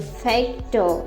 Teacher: So first of all, the word factor has 2 syllables, fact and ter. So when we pronounce this term, we stress on the first syllables